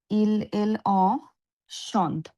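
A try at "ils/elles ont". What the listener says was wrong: লাস্টে অ নাই, জাস্ট ইল এল আছে। হ্যাঁ, ইল এল সন্ত।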